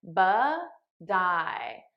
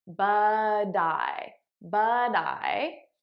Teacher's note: I'm transferring the T sound onto the next word. Now you'll notice I'm saying it as a soft D because that's American pronunciation.